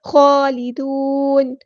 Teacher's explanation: نون کو ہم ساکن کر دیں گے وقف کرتے ہوئے، اور مد عارض بھی ہوگی یہاں پر